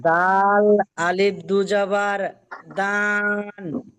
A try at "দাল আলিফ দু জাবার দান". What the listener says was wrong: ডান বলছেন কেন? এখানে টান হবে না জি।